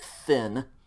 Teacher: This is just a TH sound, okay, and it's the unvocalized TH, so it's going to be like thin.